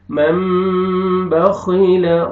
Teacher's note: نون کو میم میں چینج کرنے کو اقلاب بولتے ہیں